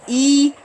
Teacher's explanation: we have to close the vocal chords then open it because the sound of it E is we have to close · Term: hamza